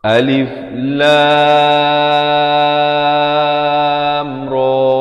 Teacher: Jadi habis lam terus masuk ra, dan ra ni dibaca 2 harakat. Ra dibaca 2 harakat. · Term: izhar